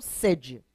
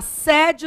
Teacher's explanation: Estou com sede, o som é fechado.